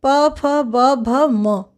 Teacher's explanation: इन सब का उच्चारण स्थान है ओष्ठ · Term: प वर्ग